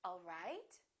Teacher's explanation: The word right, the pitch would go up.